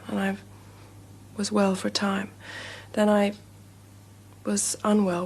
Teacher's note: princess diana did absolutely have a way of speaking in a more breathy manner almost as if she was trying to stay quiet